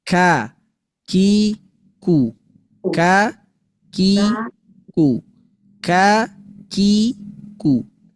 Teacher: Kaf itu adalah makhraj huruf yang keluar dari pangkal lidah.